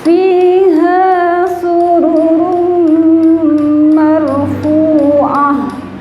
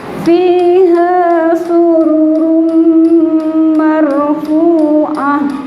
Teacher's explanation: Tanwin ketemu mim, run bertemu mim, tidak dibaca run tapi rum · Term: idgham bi gunnah